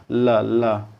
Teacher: दांत के जो जड़ है वहां पर जीव जो है टच होती है